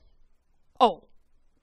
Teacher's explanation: the O in Spanish is the same in English, but it's much crisper and quick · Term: quick O